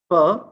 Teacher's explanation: Per is a voiceless bilabial plosive.